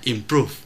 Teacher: chữ improve trọng âm rơi vào prove tức là âm tiết thứ hai, chúng ta đọc là improve.